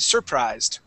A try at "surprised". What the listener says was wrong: we want to put the accent at the end try that one more time